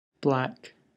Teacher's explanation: the user incorrectly says back, omitting the L sound. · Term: BL blend